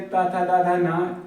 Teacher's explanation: जो ता वर्ग के ता था दा धा ना ये वर्ण हैं, इनका उच्चारण स्थल वो है वो दंत है।